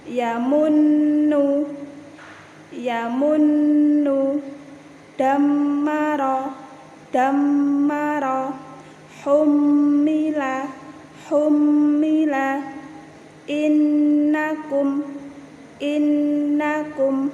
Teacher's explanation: nun tasydid dan mim tasydid dibaca mendengung mendengung dan ditahan. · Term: Bacaan ghunnah